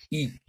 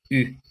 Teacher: le U, il est prononcé avec la projection des lèvres et l'arrondissement des lèvres. Si l'élève ne peut pas prononcer U, eh bien, il suffit de lui demander de projeter les lèvres en avant et de dire I.